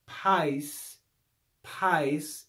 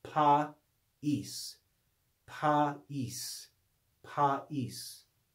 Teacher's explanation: it's not a one-syllable word with a diphthong it's two syllables there's a division between these two vowels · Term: diaresis